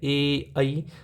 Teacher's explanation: अब ए और आई बोलोगे ना, ए आई, तो आपको यहाँ पे कंठ से भी आवाज़ निकलता है और तालु से भी आवाज़ निकलता है, इसलिए हमें कंठ तालु दोनों यूज करना पड़ता है।